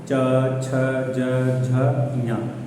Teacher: जो है ऊपर तालू वाले भाग से, ठीक है, मतलब कि जबड़े का ऊपरी भाग, वहाँ पे हमारी जो जिह्वा टच करती है जिसको हम तालव्य भी बोलते हैं , ठीक है, च छ ज झ ञ, ये तालव्य होता